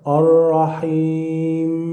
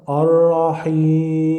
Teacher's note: you can prolong the sound of the letter Ya 2 or 4 or 6 harakat. So here you can read with 2 harakat Ar-Rahim, or with 4 harakat Ar-Rahim, or with 6 harakat Ar-Rahim, and you have the choice.